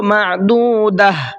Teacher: اب چاہے اس کے اوپر کچھ بھی ہو، زبر زیر پیش، 2 زبر 2 زیر 2 پیش، کچھ بھی ہو، گول تا پر وقف کریں گے تو گول تا ہا بن جائے گی